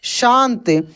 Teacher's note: तालव्य श को तालु से बोला जाता है